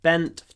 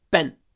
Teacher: the difference between n before a d, which is long, bend, and n before a t, which is short, bent.